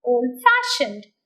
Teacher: in the word old fashioned fashion is the second part so fashion takes the stress